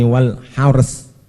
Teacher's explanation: Roknya tebal, cuma saknya itu huruf tarkik, maka harus meringis. Hars harus main bibir, moncong ya meringis, moncong meringis lagi.